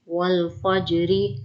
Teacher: واو لام زبر وال فا جیم زبر فج والفج را زیر ری والفجری. را کو بریک پڑھیں گے را کے نیچے زیر ہے